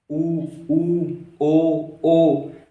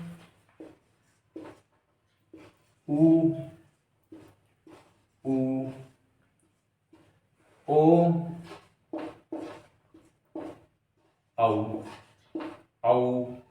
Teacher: अपने होठ गोलाकार में आ गए इसमें, वर्ताकार में।